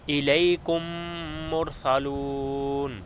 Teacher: ادغام اس طرح کریں گے کہ میم ساکن کے بعد جو میم ہوگا اس پر ہم تشدید لگا دیں گے، اسے ہم ادغام شفوی کہتے ہیں، اور یہاں غنہ بھی ہوگا